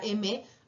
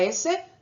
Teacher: hay algunas consonantes que vibran, como por ejemplo la M, pero si hacen una consonante como la S, no vibra.